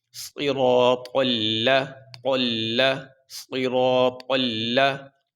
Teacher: طا کو موٹا کرتے ہوئے ساتھ لام کو موٹا نہیں کرنا، لام کی آواز بریک ہی رکھیں گے